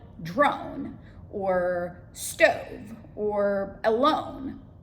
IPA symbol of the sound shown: oʊ